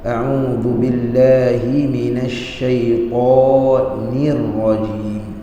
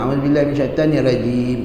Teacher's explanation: Ta tebal, nir nipis.